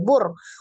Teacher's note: Jadi langsung ditasdid ke huruf ro. Ro tasdid berarti ro-nya ada 2. Pertama ro sukun. Nah sebelumnya ada dhammah. Maka dia dibaca tebal